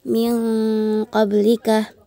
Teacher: nun sukun bertama bertemu dengan huruf qof. Dibaca samar-samar dan dihukumi ikhfa hakiki.